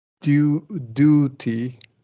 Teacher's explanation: And you're gonna flap that T.